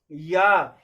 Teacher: जब आप या बोलते हैं तो जिह्वा जो है अपने आप तालु में स्पर्श करती है, अर्थात ई का भी उच्चारण स्थान क्या हो गया, ये ई का उच्चारण स्थान तालु हो गया, और या का भी तालु है, तो ई के स्थान पर क्या हो जाएगा, या हो जाएगा।